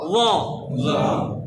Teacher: ল উচ্চারণ কোথায় থেকে, জিহ্বার অগ্রভাগ উপরের দাঁত